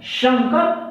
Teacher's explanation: इस सौ जब लगाएंगे मुंह गोल होगा, श, और सीटी की तरह उच्चारण होगा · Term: तालव्य सो